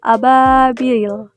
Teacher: Hukum tajwidnya mad tabii karena ya sukun setelah kasrah dibaca panjang dua harakat